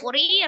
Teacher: ya sukun sebelumnya kasroh di huruf ro kasroh dibaca tipis atau tarqiq